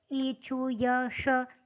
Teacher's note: ई, चु, य, श ये तालव्य से बोले जाते हैं